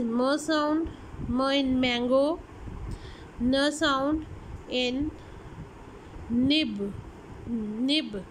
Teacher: nasal, produced by the release of the air through the nasal cavity